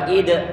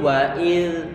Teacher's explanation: Hati-hati jangan sampai nanti diberikan qala-qala pada huruf dzal ini, jangan diucapkan sebagai huruf dzal.